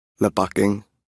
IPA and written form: ˈlɛˌpɑˌkiŋ (Lepaking)